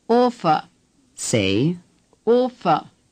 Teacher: The R at the end of a German word is hardly pronounced at all. The V is pronounced like F.